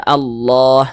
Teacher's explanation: huruf lam yang terdapat pada lafaz Allah ini, lam jalalahnya ini kita baca tebal. Kita baca Allah seperti itu.